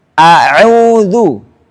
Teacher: Wal hamzu raqiq. Dan hamzah baca dengan tarqiq, tipis.